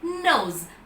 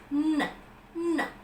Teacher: The contact is between the tip and blade of the tongue with the alveolar ridge.